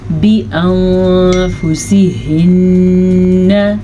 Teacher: ہم نون ساکن کو چھپا کے پڑھیں گے اور غنے کے ساتھ پڑھیں گے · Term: اخفا